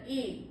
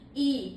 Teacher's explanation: और बड़ी ई जो होता है वो होठों को हल्का सा फैला करके बोला जाता है, ई, बाहर की ओर निकलते हैं ये स्वर।